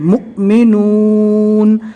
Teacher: یہاں پر حمزہ واو کی شکل میں آ گیا اور اس کے اوپر جزم ہے، پہلے والے حرف سے ملا کر جھٹکا دے کر پڑھیں گے